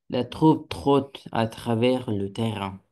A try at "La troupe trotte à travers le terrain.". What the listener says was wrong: Très bien.